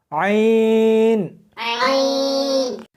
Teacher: اس کو حلق میں سے سختی کے ساتھ نکالنا ہے، عین۔ ملا کر پڑھیں، عین۔